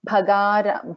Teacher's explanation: Bha is a Mahaprana, Ga is an Alpa Prana, and Dha is a Mahaprana.